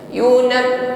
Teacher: ba sifatnya syiddah, inhibas jarayan shaut, tertahan aliran suara ketika mengucapkannya